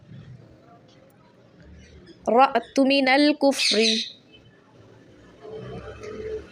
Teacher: साकिन हमज़ा पर हमेशा झटका दे के पढ़ा जाएगा।